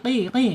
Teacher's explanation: pangkal lidah ini harus terangkat dan hurufnya huruf tebal istila